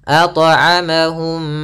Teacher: Mim mati bertemu mim kita namakan dengan idgham mim. Cara melafalkannya yaitu suara mimnya masuk kepada mim kedua dan ditahan mimnya. Ditahan m-nya.